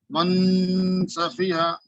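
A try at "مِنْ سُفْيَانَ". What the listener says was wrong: من نہیں, آپ کی نو زبان جو ہے اوپر لگ جا رہی, اوپر زبان کو لگنے مت دیجیے, صرف ناک میں آواز کو گھمائیے. لگ رہی ہے آپ کی زبان اوپر.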